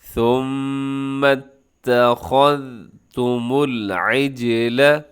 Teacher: صرف خا کو آپ نے موٹا کرنا ہے، اس کے بعد جو ذال ہے، ذال کو اپنے باریک رکھنا ہے، ذال کو موٹا نہیں کرنا۔ اکثر کیا ہوتا ہے کہ ثم اتخذتم العجل، اب اس میں کیا ہوتا ہے کہ ذال بھی موٹا ہو جاتا ہے، تو ذال کو موٹا ہونے سے بچانا ہے، صرف خا حروف جو مستعلیہ میں سے ہے، موٹے حروف میں سے ہے، تو کیسے پڑھیں گے؟